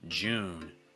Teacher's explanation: It's not oo, so it's not Jew, it's Jew. And you want to make sure you're holding that vowel long enough before the N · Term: oo sound